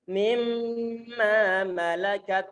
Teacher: Di saat antum mengatakan mimma malakat, hidung antum bergetar, itulah gunnah. · Jadi di saat kita itu menggetarkan hidung, walaupun tanpa sengaja, tapi langsung kita di saat mengeluarkan suara, sebagian suara nun yang kita tahan, nanti otomatis nanti anginnya ataupun suaranya lewat hidung. Karena memang makhrajnya nun, sebagian di lidah, sebagian di hidung.